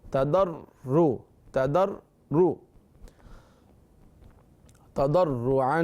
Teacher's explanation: ربکم، ادعو ربکم تضرعا، ضاد حروف مستعلیہ میں سے تضرع، را بھی پر پڑھیں اور تشدید بھی ہے